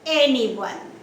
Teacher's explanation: anyone stresses on the first syllable